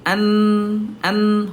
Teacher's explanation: Ayah Bunda huruf nun ada di gusi